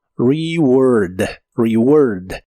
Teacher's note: E se pronuncia como una I corta y la A se pronuncia como O